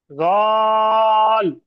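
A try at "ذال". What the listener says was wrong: یہ غال نہیں ہے، یہ زال ہے، اس کو تھوڑا سا باریک پڑھیے۔ زال.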